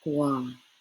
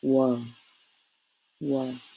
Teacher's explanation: In the south, we say it almost sounding like a W.